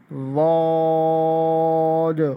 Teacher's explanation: تو اس میں یہ ہے کہ ضاد کو ہم جو ہے وہ اس کے آخری میں دال کا لفظ آتا ہے ضاد، دونوں کو نرم پڑھتے ہیں، نرم کر کے پڑھتے ہیں اور دانتوں کے سامنے کی طرف زبان لگا کے اور اس کو پڑھتے ہیں تلفظ سے ضاد۔ ہونٹ گول نہیں ہوں گے اور اس کو جو ہے جو ساؤنڈ اس کا نکلے گا وہ نرم کر کے پڑھیں گے لیکن موٹا ساؤنڈ نکلے گا